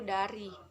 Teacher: Contoh yang keempat D. Hidup, oral, apiko, dental, dan plosif.